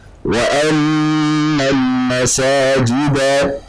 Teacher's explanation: Gunnahnya, dengungnya dipanjangkan, ditahan. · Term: gunnah mutawwalah